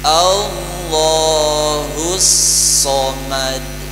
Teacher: Meski bunyi mirip tapi salah makhraj. Dia bunyi shad itu pada lidah ya, ujung lidah dengan gigi seri bawah seperti huruf sin persis. Ditebalkan dengan cara digemakan so. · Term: huruf shad